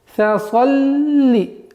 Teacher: Фа мягкий звук. Нельзя его произносить фаса.